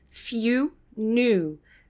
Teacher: esse som de I não é um som de I super forte, ele é um som de Y, na verdade. Um som de Y é meio som de I.